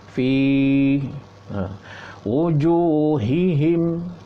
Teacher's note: Ta'rifu fi panjangkan sikit, 2 harakat. Mad asli tu 2 harakat.